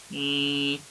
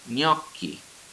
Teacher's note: you would have like a bona fide palatal nasal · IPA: ɲ